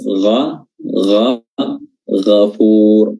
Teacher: huruf ghain, di sini makhrajnya sama dengan huruf kha, tenggorokan bagian atas, gha, ghafur, dan juga memiliki sifat al-isti'la, tebal.